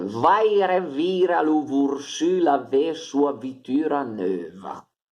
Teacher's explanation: in questa frase tutte le V hanno funzione consonantica, quindi si leggono ve, fricativa